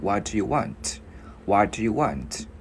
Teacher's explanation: chữ T mình câm cũng được, hoặc là nếu mà mình muốn điệu đà thì mình bật ra cũng được